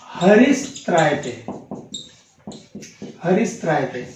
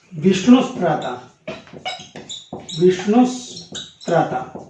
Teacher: विसर्ग के स्थान पर स हो जाता है